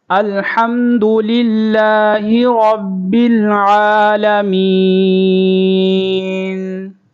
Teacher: یہاں پر ہا کو بریک پڑھیں گے، حلق سے نکالیں گے، را کو پر کریں گے، رب اور با کو لام کے ساتھ ملائیں گے